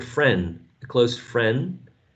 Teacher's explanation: she may not be pronouncing the last d.